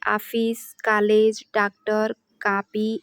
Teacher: इसका लिपि चिन्ह ऐसे लिखा जाता है इसका, और यह हिंदी में आ और ओ के बीच की ध्वनि होती है